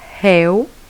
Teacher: o E já funciona como vogal e o U como semivogal.